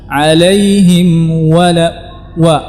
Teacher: Dan wawnya harus dimajukan kedua bibir. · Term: huruf wawnya